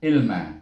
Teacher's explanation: Jadi sini bertemu dengan kalimah ilma, itu ain baris bawah bunyi i, tengah halkum, kemudian dimati dengan lam, dan naik ke atas ke langit-langit sana, kemudian baru mim baris di atas ma, ilma.